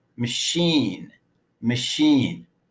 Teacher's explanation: in the word machine the unstressed first vowel is reduced to up even though it's spelled with a letter a machine machine the